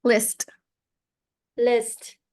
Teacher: better the first time you said it I it was Liss I didn't really hear the T there needs to be more emphasis on the T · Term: final consonant